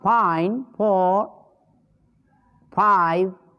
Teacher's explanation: नीचे का होंठ ऊपर के दांत को अगर इसका उच्चारण स्थान आता है तो वह दंतोष्ट होगा